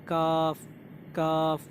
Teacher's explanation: जो ज़बान का एक तो बिल्कुल नरम वाला हिस्सा है और नरम के आगे जो थोड़ा सा खुशक वाला, कड़क वाला हिस्सा है, वहाँ से काफ निकलेगा। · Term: छोटा काफ